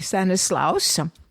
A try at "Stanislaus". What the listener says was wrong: Why do you call him Stanislaus? It's Stanislas. In French, he might be Stanislas with no U.